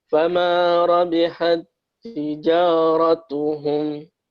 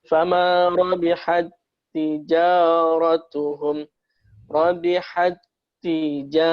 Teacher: Ta bertemu ta. Jadi sama dengan sifatnya, sama dengan hurufnya, maka lebur menjadi satu seakan-akan dia tak bertasydid. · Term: idgham mutamatsilain